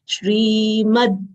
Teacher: Shri again is a long sound and we'll always say Shri as there is palatal sh over here with full Ra. Half palatal sh, full Ra having long E sound. We'll say Shrimad, Ma full letter half the.